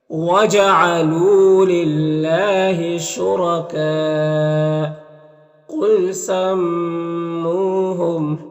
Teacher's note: قاف حروف مستعلیہ میں سے پر پڑھیں گے، میم مشدد غنہ ہوگا